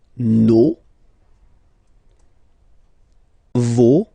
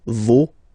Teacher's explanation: even if you've got this final S, you don't pronounce it